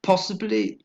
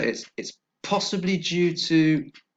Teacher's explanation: three syllables and the stress is on the first syllable